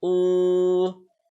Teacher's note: When a letter has a Pesh on it and the next letter is a Waw with a Jazm on it. Then we stretch it for 1 second. We stretch that letter with the pesh with 1 second, and that is called the Waw Madda rule.